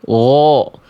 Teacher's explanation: Istila itu artinya adalah terangkat bagian pangkal pangkal lidah kita. Jadi, ketika kita melafalkan huruf ghain, kenapa dia bisa tebal? Karena pangkal lidahnya terangkat. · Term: huruf tebal